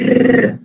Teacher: A tongue tip like r, tongue tip trill. When you roll it and say r, not the Arabic r, but slightly lighter than the Arabic.